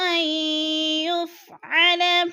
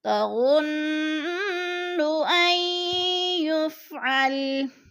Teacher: نون ساکن ہے، آگے یا مشدد آ گیا تو نون ساکن کو نہیں پڑھیں گے، حمزہ کو یا کے ساتھ ملا کر پڑھیں گے۔ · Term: ادغام